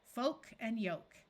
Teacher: two words follow this pattern with a long o and a silent L